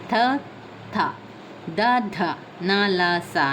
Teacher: ಹಲ್ಲುಗಳ ಸಹಾಯದಿಂದ ಹುಟ್ಟುತ್ತದೆ ಆದ್ದರಿಂದ ಅದು ದಂತವ ವರ್ಣಗಳೆಂದು ಕರೀತೇವೆ